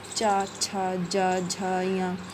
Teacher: इसमें हमारी जीभ तालु को छूती है। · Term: च वर्ग